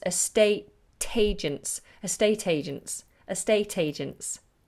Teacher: what we tend to do is put the T of estate into the agents